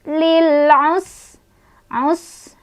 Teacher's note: sinnya punya sifat hamas, ada angin keluar, dan sofir ya, ada desisan